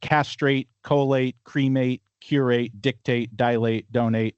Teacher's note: all of those have the the stress on the first syllable for Americans. And these are all two syllable words.